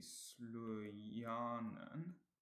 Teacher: And in my third example, which will be slujanen, the second syllable is stressed.